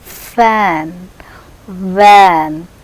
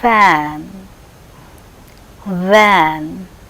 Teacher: F is voiceless, whereas v is voiced. Both are labiodental.